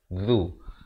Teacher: Aun, dua harakat. Zu di depan lidah. Hujung lidah itu keluar.